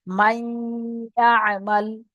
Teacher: ইউমিনের 4টি অক্ষরের মধ্যে ইয়া এসেছে, তো নুন সাকিনের আওয়াজকে নাকে তুলে, এই নুন সাকিনের আওয়াজকে মিলিয়ে এক আলিফ পরিমাণ গুণনা করে পড়তে